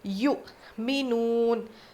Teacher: یؤمنون یو یا حمزہ پیش یؤمنون یہ مجہول غلط ہے، یؤمنون نہیں پڑھیں گے، ہونٹ پورے گول ہونے چاہیے. یؤمنون تو جھٹکا، حمزہ کے اوپر جزم ہو تو جھٹکا دے کے پڑھیں گے.